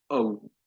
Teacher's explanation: अ और उ साथ साथ जैसे आप रख दें तो औ